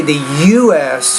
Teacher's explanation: you have to put equal stress on both of those initials